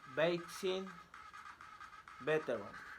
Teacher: Place of articulation, labiodental. Manner of articulation, fricative. Voicing, voiced.